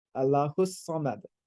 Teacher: So the vowel on sa becomes closed a little bit, sa. So it's rather than sa.